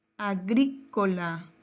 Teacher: Su mayor fuerza de voz está en la antepenúltima sílaba.